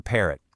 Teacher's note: It's a really punchy P sound, like a tiny little explosion of air from your lips.